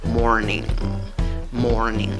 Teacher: cuál es la sílaba que lleva la fuerza de voz la primera sílaba contando de izquierda a derecha · a derecha como pronuncia la palabra morning morning acaba en en la mezcla de la n con la g ese es el sonido de la última consonante de esta palabra · en la pronunciación lleva una y corta en la segunda sílaba no es una y larga